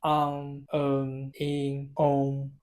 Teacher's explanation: It's more like on plus more like in the nose, like your nose is blocked because the cold. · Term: the nose sound